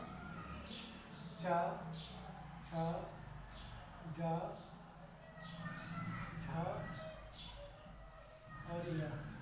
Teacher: चा वर्ग जो होता है इनका उच्चारण वो तालु से होता है, जब जीभ को आप अपने तालु से टच करते हैं तभी इनका प्रोनाउंसिएशन या उच्चारण होता है, इसलिए इनको हम तालव्य व्यंजन कहा जाता है।